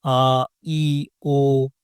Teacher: घोषत्व का मतलब है स्वर तंत्रिकाओं में कंपन। जब हम इन ध्वनियों को बोलते हैं और हमारे गले में कंपन महसूस होती है, तो यह घोष ध्वनि है।